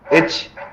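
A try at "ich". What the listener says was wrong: ईश। चै नहीं बोल लेंगे, इसको शय बताया था आपको, याद है?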